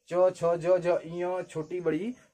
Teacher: जब भी आप इसको बोलेंगे च छ ज झ इ छोटी बड़ी, तो जो जीभ है आपकी है वो तालु को टच करेगी। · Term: तालव्य